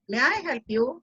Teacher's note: There's a question. I need it in rising tone.